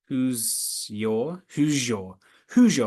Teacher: that's coalescence when the S and Y come together